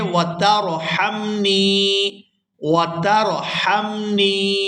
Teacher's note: یہاں آپ لوگ آیت دیکھ رہے ہیں وَتَرْحَمْنِي، یہاں را ساکن ہے اور اس سے پہلے زبر ہے، را کے اوپر جزم ہے یعنی را ساکن ہے اور اس سے پہلے زبر ہے، تو یہاں را جو ہے وہ پورا ادا ہوگی، موٹی ادا ہوگی، اور اس کو پڑھیں گے وَتَرْحَمْنِي وَتَرْحَمْنِي۔